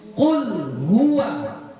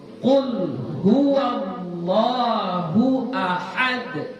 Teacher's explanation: Jadi yang tafkhim yang mana? Hanya lamnya saja, wawnya tafkhim tidak. Jadi huwa tetap baca huwa.